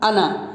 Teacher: یہ نون کے بعد کا الف کہیں نہیں پڑھا جائے گا، یہ انا کی طرح لکھا ہوا ہے لیکن یہ پڑھا جائے گا انا، یعنی نون کے بعد جو الف ہے یہ الف پڑھا نہیں جائے گا